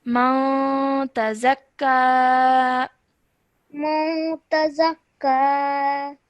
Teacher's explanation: after noon sakin, the next letter is ta. That means that we have to produce a 2-second light nasal sound.